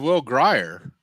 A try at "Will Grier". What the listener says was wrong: Horrible pronunciation of his name, by the way. It's Greer. It's been Greer his entire life. I've never heard it Grier.